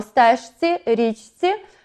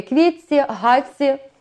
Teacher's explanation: в нас маємо подовження «ц». Знову ж таки, «квітці», «гаці» у нас виходить подовжений «ц».